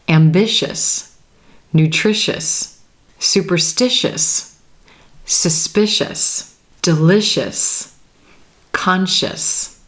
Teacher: this suffix is going to be pronounced as the single syllable us us · each of these words has that sh shsh as in ship or Shake sound right before the suffix